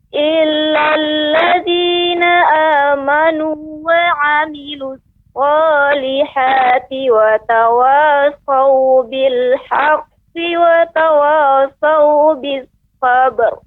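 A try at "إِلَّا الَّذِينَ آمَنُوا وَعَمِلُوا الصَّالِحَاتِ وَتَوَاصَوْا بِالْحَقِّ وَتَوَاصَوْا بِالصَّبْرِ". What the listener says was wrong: Iya. Bagus Ibu.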